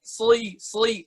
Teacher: Yang bikin bunyi soi itu lidah belakangnya yang main. Jadi lidahnya tuh kayak ulet gitu loh, naik turun. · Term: huruf sod